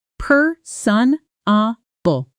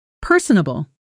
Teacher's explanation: Pronunciation per sunable. Stress on the first syllable.